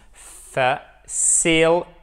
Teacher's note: le T, lorsqu'il est compris entre deux voyelles, le pauvre, il est compressé et d'un T, il devient presque un D